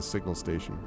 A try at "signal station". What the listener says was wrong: Signal, right? Like we're not saying single station because I keep hearing singles station. Signals.